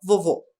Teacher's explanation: o vovô tem o assento circunflexo tem o som fechado o assento circunflexo faz isso com a vogal né ele fecha